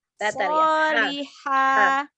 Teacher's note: Makhorijul huruf ha dari tengah tenggorokan.